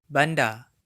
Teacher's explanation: the final R is silent in many Malay accents, including the mainstream Johor, Riau, Selangor Malay